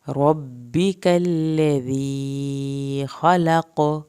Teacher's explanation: यहाँ पर आखिर में काफ का कलकला होगा